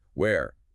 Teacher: Where often has that we sound and the vowel sounds like air.